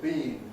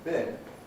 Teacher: In the case of bean, bin, it's not so crucial to listen to the quality, because it's helped there by the durational difference.